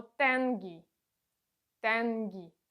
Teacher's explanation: е носовий у нас вимовляється е + носовий звук м